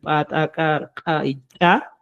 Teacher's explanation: las glotalizadas, que vienen el pa, ta, ka y cha, con golpe seco